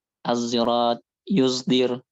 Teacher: Wahiyallati yukhalitu sautuha yang bercampur suaranya dengan suara zai. Jadi dia enggak murni sod, tapi dia sod bercampur dengan suara zai. Walaupun dominannya masih tetap sod, bukan zai.